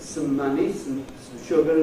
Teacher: In fact, it hasn’t even got a vowel. It’s just /s/ and /m/, unless a vowel begins the next word. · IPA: [sm̩]